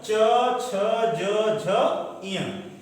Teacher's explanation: च वर्ग, च, छ, ज, झ, ञ, इसका उच्चारण तालु से होता है